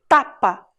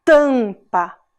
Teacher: o A junto com o M fez esse som nasal